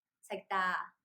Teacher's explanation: Since this word has long vowel, which is double a, the stress is on the second syllable, not the first one. So we say sagda instead of sagda.